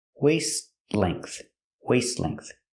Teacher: The T in waist is a stop T, but it's also between consonants, so you don't really hear it.